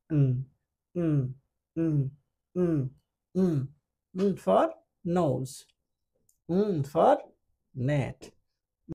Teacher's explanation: জিহ্বাটা উপরের গোড়ালিতে টাচ করে থাকে, যার কারণে বাতাসটা বের হয় নাক দিয়ে। এটাও একটা ন্যাসাল সাউন্ড।